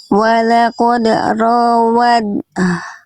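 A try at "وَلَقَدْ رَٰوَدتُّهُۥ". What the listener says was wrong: Jangan pakai dal. Jadi langsung masuk tanya ya. Jangan menyisakan bunyi ed, tapi langsung langsung kamil. Dia idgham mutajanisa ini langsung kamil masuk sempurna ke taknya. Jadi anggap tidak ada dalnya.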